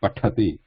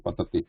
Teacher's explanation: This is mahaprana, tha. This is alpa prana, less breath, ta.